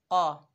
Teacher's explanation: कौफ जो है रूफ़ इस्ताला में से है, मोटा अदा होगा